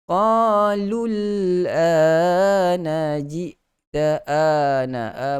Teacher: Tetapi ingat, kalau selepas mad asli itu ada huruf yang mati, tiada lagi kegunaan huruf mad di situ. Tiada lagi bacaan dua harakat pada mad asli di situ kerana huruf lam yang berbaris di hadapan itu masuk terus ke dalam huruf lam yang mati.